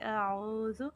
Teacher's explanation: منہ کے خالی حصے سے ادا ہوگا اور عین وسط حلق سے